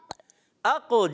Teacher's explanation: اق جلدی میں قلقلہ کرنا ہے